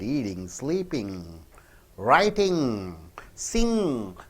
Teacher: All the NG should be pronounced through your nose.